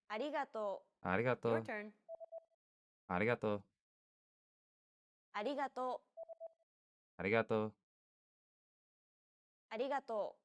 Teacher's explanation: the quick tapping motion your tongue makes as it strikes the top gum Ridge · It sounds like a mixture between an r and an l sound